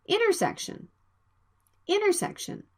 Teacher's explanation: the nt sound is between vowels the t sound can be dropped